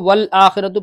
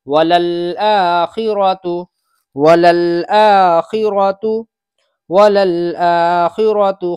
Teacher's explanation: ایک غلطی یہاں ہوتی ہے کہ عام طور سے اس کو وَالْآخِرَةُ پڑھ دیتے ہیں، تو یہ پہلا لام ہے، دوسرا لام ہے، لام لام زبر لل، اس لیے دونوں لام واضح نکلنے چاہیے۔